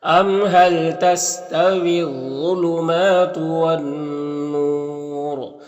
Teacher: یہاں پر الف لام حروف شمسی نون کے شروع میں تو الف لام دونوں کو نہیں پڑھیں گے، یہاں پر نون مشدد غنہ ہوگا اور یہاں پر وقف کریں گے تو مد عارض وقفی ہوگا اور را کو پر پڑھیں گے · ام کے میم میں اظہار شفوی ہوگا